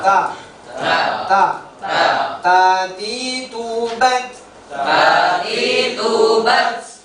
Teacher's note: Ujung lidah dia bertemu dengan pangkal gigi seri atas. Ujung lidah bertemu dengan pangkal gigi. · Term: huruf ta